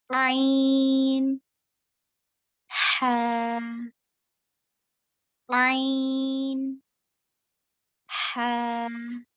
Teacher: हलक का हिस्सा है दरमियानी हलक, इसे वस्तल हलक भी कहते हैं. मिडिल वाला हलक में जो मिडिल वाला हिस्सा होता है, जहाँ पर हड्डी होती है, नोटिसेबल है, वहां पर आप उंगली रखकर पढ़ सकते हो वाज़े होने के लिए मखरज.